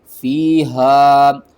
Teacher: ہا کو آپ نے حلق کے سب سے نیچے والے حصے سے ادا کرنا ہے، آواز جو ہے نا وہ بھاری آنی چاہیے